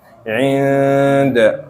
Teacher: itu ada ditahan 2 harokat, itu ikhfa